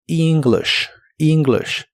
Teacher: La E se pronuncia como una I larga o doble y la I se pronuncia como una I corta.